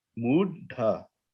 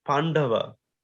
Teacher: it's that D that has that the tongue goes to the roof of the mouth